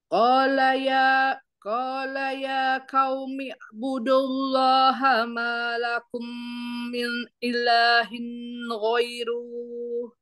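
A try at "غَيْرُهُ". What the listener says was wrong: Pendek ru-nya. Ghairu.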